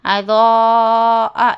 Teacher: حرف مدہ کے بعد حمزہ اسی کلمے میں ہے تو اس کو 5 حرکت کے برابر کھینچ کر پڑھنا ہے